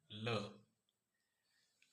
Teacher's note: यह व्यंजन होता है र पार्श्विक व्यंजन। इसके उच्चारण में वायु जीभ के दोनों ओर से निकलती है।